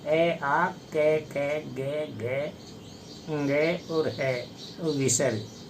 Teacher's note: ये कंठ से उच्चरित होते हैं, इसलिए इनको कंठय कहते हैं।